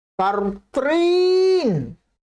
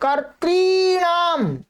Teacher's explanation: यहां द्वितीय विभक्ति के बहुवचन के रूप में दीर्घ री है, तो दीर्घ ही उच्चारण करना है आपको।